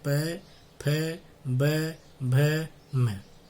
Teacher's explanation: जो उपपद्मानीय है प और फ, उनका उच्चारण स्थान क्या है? ओष्ठ, अर्थात हमारे होठ